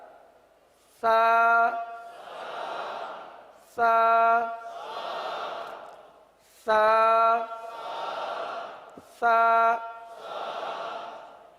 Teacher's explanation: اس کو نرمی کے ساتھ اس طرح لگائیں کہ گویا کہ سانس جاری ہو رہا ہو